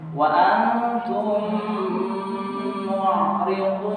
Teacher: ditahan karena mim ketemu mim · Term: idgham mim